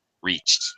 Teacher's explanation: Reached with the T sound. The ED, past tense ED ending is going to sound like a T after a CH sound of the main verb every time.